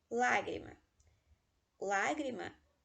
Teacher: uma grave terminar em consoante leva centro lágrima lágrima a pena antepenúltima sílaba é a sílaba tônica